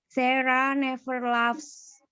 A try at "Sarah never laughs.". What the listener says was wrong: Ya, Sarah never laughs. Bagus ucapannya.